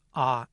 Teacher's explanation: note, by the way, that [ɑ] is not produced with lip rounding